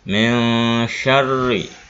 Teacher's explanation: Lafalnya min syarri. Nun mati ketemu huruf sya. Pembacaannya ikhfa, dibaca sama-sama antara jelas dan dengung.